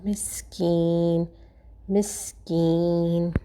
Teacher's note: یا سے پہلے کسرہ ہے تو ہم اس کو کھینچ پڑھیں گے ایک الف کے برابر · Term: یا مدہ